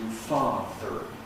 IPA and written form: ˈfɑːðr̩ (father)